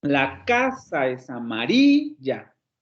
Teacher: Solamente hay dos acentos. En K y RI.